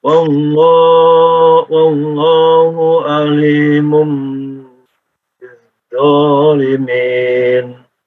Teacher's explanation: ada mim bertemu dengan ba, ditahan